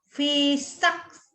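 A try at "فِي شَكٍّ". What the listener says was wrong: Ah, jangan ada e-nya ya. Fi syak.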